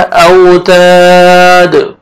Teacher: دال کو جب سٹاپ کریں گے وقف کی صورت میں دال ساکن ہو جائے گا اور دال حروف قلقلہ میں سے ہے، ڈبل ساؤنڈ آئے گا